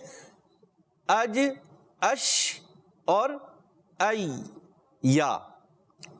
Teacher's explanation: یہ زبان کے درمیان اور اوپر تالو کے درمیانی حصے سے جیم شین اور یا, یہ زبان کا درمیان اور اوپر تالو کے درمیان سے حروف ادا ہوتے ہیں. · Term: جیم شین یا